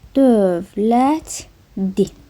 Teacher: Yazılışı və tələffüzü eyni olmur. Çünki burda nə baş verib? L D əzlənməsi baş verib.